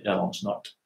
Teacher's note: this combination of the R that is not fully pronounced and the S that is also not pronounced becomes this sh, okay? If it goes over two words, and you say them slowly, then you don't do it.